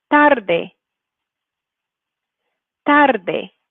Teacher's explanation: You can hear how that first syllable is the stressed one.